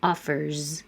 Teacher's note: Offer. Is voiced. Leave your voice on, and you have a Z.